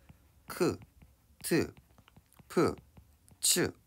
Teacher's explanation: 예사소리 기역 디귿 비읍 지읒과 히읗이 만나서 거센소리 크트 프츠로 바뀌는 현상이라고